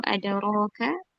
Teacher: dal sukun qalqalah sugra dipantul ringan memantulnya ke huruf e karena huruf dalis. · dibaca taslim atau tebal karena berharokat fathah